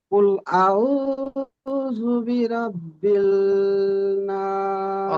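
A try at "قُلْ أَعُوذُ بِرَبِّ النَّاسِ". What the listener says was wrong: রব্বিল, রব্বিল নয়, রব্বিন নাস।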